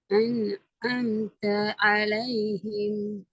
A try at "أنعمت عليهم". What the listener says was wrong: இந்த நிப்பாட்டி உதயல அது நிறுத்திட்டு நீங்க எடுக்கிறீங்க உச்சரிக்கிறீங்க. அது அலிஃப் தான். அது அலிஃப் தான். முன்னாடி வார எழுத்திலிருந்து தெளிவாக பிரிச்சு எடுத்து உச்சரிக்கணும்னு சொன்னோம். அலிஃப் ஆயின் அப்படி அல்ல, இணைந்தானே வரணும், சேர்ந்தானே வரணும். أنعمت عليهم أنعمت عليهم சேர்ந்தான் வரணும்.